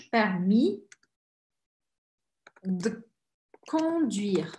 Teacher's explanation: Permis, é como se o I fosse a sílaba forte.